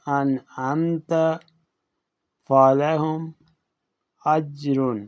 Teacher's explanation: میم ساکن کو اس کے اپنے مخرج یعنی دونوں ہونٹوں سے بغیر صفت غنہ کے ادا کیا جائے گا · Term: اظہار شفوی